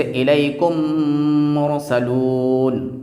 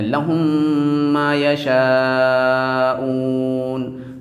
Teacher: اور تیسرا، اگر میم ساکن کے بعد میم آ جائے تو اس کا طریقہ یہ ہے کہ ہم میم کو میم سے ملا کر کے وہاں اخفا نہیں کریں گے بلکہ صرف غنہ کریں گے، میم کو میم کے ملا کر کے میم کو ظاہر بھی کریں گے اور غنہ کے ساتھ پڑھیں گے۔ تو جیسے الیکم مرسلون، یعنی میم ظاہر بھی ہو رہا ہے اور اس کے ساتھ ساتھ ناک میں بھی آواز جا رہی ہے تو یعنی غنہ بھی کر لے رہے ہیں، لہم ما یشاءون۔